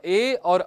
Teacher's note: जैसे कि उसमें वर्ण है एक अ और ई को मिला देने से जो ए और ऐ मिलता था हमको, इसका ए और ऐ इनका उच्चारण स्थान कंठ भी होता है और तालु भी होता है। उसका ए और ऐ बोलते समय हम कंठ का भी प्रयोग कर रहे हैं और तालु का भी, इसलिए द्विस्थानीय वर्ण हो गए।